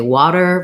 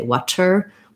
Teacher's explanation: I often call it flap T because that's where people need to work on it to have that American sound, because that's one of the distinctive aspects of the American accent, that we say water versus other dialects of English that say water with a true T with a burst of air.